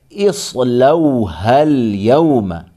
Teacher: ہا کو ملائیں گے لام کے ساتھ